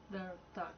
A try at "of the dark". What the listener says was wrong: Of the dark. There's no R in THE. Of the dark. Of the. You have a TH, but you're not using it. Because it's coming really easy to you. You're being sloppy. That's like saying a D, which is wrong. TH is this.